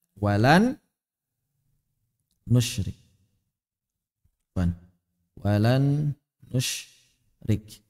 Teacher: kita ucapkan huruf yang kedua bertasydid sambil mengeluarkan suara dari rongga hidung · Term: ghunah